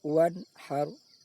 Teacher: bunyi nun sukun dibaca jelas. Wan haru, tidak boleh dibaca dengung. Wan haru, juga tidak boleh dibaca samar antara dengung dan jelas. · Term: izhar halki